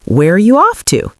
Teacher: Make your voice fall at the end. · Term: intonation